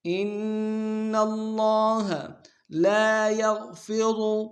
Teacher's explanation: ان اللہ لا یغفر، لام کے سالف مدہ ایک دام کھینچیں گے، یا کو غین کے سامنے لائیں گے، غین کو موٹا ادا کریں گے، غا کو موٹا ادا کریں گے۔